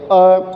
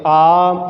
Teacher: इसके उच्चारण का कम समय लगेगा तो हम कहेंगे अ, इसका डबल समय लगेगा क्योंकि डबल मात्रा है, 2 मात्रा है तो हम कहेंगे आ, और इसमें एक मात्रा और आ जाती है, इसलिए ह्रस्व से तिगुना समय लेते हैं।